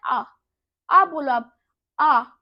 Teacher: जिन स्वरों के उच्चारण में मुख द्वार सबसे अधिक खुला होता है उन्हें हम क्या कहते हैं, विव्रत कहते हैं